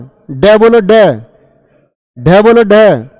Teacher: जीभ ऐसे समझो जैसे जीभ ने घूसा मार दिया वो मूर्धा पे, बहुत तेजी से लगती है, झटके के साथ। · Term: उत्क्षिप्त व्यंजन